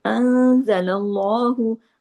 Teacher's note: नून साकिन के बाद जा है, इख्फा हकीकी गुन्ना कामिला